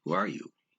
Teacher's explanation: because of this question you raise the stress a little bit at the end of the sentence